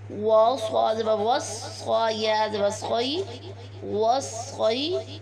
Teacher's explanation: صاد کو موٹا کر کے پڑھیں گے، اس کے علاوہ یہ مشدد حرف ہے اس لیے اسے ہم سختی سے پڑھیں گے۔ یا ساکن سے پہلے والے حرف صاد کے اوپر زبر ہے یا حرف لین بن جائے گا، اس لیے یا کو نرمی سے پڑھیں گے۔